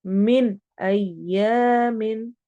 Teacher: नून को वाजिया पढ़ना है, इजहार हो रहा है।